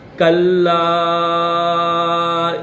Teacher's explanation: کلا، کاف کو لام کے ساتھ ملائیں گے کیونکہ لام کے اوپر تشدید ہے اور چھوٹی مد بھی ہے تو 3 الف کی لمٹ میں کھینچیں گے۔